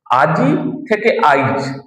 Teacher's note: হ্রস্বই বা হ্রস্বউ শব্দের মধ্যে থাকলে তার আগে উচ্চারিত হওয়ার যে প্রবণতা, একে বলছে অপিনিহিতি